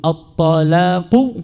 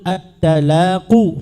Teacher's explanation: ربما إن كان ربما إن كان التغير لم يكن إلا في صفة ليس في الحرف، صفة تغيرت من صفات الحروف فاستبدل الطاء بدلا عنه بالتاء